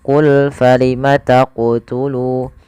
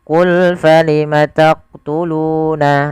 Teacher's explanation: Qalqalah artinya memantul. Maka ketika melafalkan huruf qaf di sini harus memantul